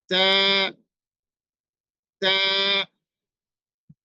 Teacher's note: আমাদের জিহ্বার যে আগাটি আছে সেই আগা আপনার সামনের উপরের দুই দাঁতের গোড়াতে লাগিয়ে দিবেন দিয়ে উচ্চারণ করবেন আপনার এই তার উচ্চারণটা শুদ্ধ হবে যেমন আমি